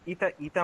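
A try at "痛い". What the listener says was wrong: ইতাই মানে ব্যথা, ইতাই, ঠিক আছে। ইতাই দেখেন, ইতা না, ইতাই, ই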